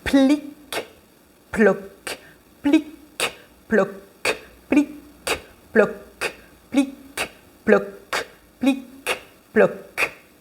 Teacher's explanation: ça aussi c'est à prononcer en retenant l'explosion du peu